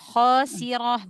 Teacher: Sin biasa, khasirah, bukan shin tapi sin biasa